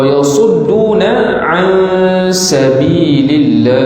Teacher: Sad zai ini huruf hams, jadi desir.